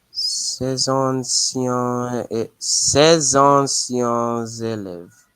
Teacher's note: there's a liaison there because you have your adjective before